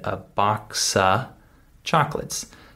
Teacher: didn't say a box of chocolates I said a boxa chocolates so I skipped over the F sound this is the way that native speakers would say this sentence · I said a box of chocolates. So I skipped over the F sound. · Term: reduced speech